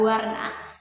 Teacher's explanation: Karena bunyi W ini, Teman-teman, dia kualitasnya hampir mirip dengan bunyi vokal. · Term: bunyi semivokal